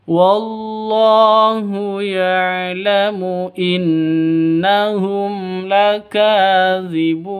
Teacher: Wallahu ya'lamu innahum, non tasydid berdiri sendiri, gunnah musyaddadah, jadi dengung 2 ketukan